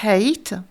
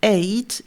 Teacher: une consonne fricative glottale qui va être présente dans le mot hate